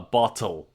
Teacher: l in the function of a vowel or syllabic if you will as in English L